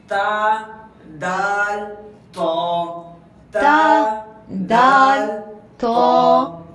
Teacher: یہ جو آپ کی دانتوں کی جو جڑ ہے نا، جڑ، اس کے اوپر ایک کھردری سی جگہ ہوگی، مطلب کہ کھردرا پن ہوگا وہاں پہ یہ زبان کی نوک لگائیے اور تین ورڈ ادا کریے۔